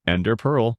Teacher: people say ender pearl with emphasis on the first word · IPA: /ˈɛndər pɜːrl/